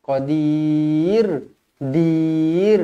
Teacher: mad arid lis sukun. Dibaca 2 atau 4 atau 6 harakat.